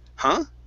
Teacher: our voice starts low and then comes up like you're asking a question